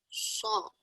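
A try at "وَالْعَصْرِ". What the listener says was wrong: So. Panjangin dulu bunyinya. So. Ya, as, wal as. Terus masuk ro ya. Wal asr. Ya, wal asr. Wal asr. Wal asr.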